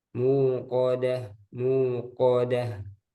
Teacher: kof coba ko, ko nggak boleh ada udara